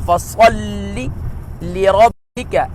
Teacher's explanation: یہاں صاد ہے اور لام مشدد ہے، تو اس سے ڈبل لیٹر ڈبل ساؤنڈ پڑھیں گے اور مشدد کو خوب جماؤ کے ساتھ پڑھتے ہیں